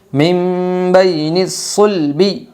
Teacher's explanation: نون ساکن کے بعد با آئی ہے اس لیے نون ساکن کو میم سے بدل کر غنہ اور اخفاء کے ساتھ پڑھے گی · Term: اقلاب